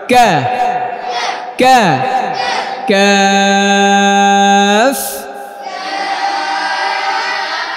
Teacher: কাফ জিব্বার গোড়া থেকে একটু আগে বাড়াইয়া উপরে লাগায়া